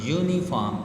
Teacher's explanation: Note that the uniform starts with the vowels but the first sound is a j और अ या फिर या sound है, लेकिन ये यू जो है आ की साउंड नहीं दे रहा, therefore आ instead of एन is used here, क्योंकि उसकी जो साउंड है वो एग्जैक्ट जो है आ की नहीं कर रहा, बल्कि यू अपनी साउंड प्रोड्यूस कर गए।